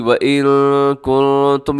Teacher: आवाज़ को अपने नाक में लेके जाना है। नून साकिन के बाद काफ है, फिर आगे जो नून साकिन है उसके बाद ता है। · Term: इख्फा